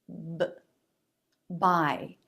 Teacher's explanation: lips come together vocal cords vibrate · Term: B consonant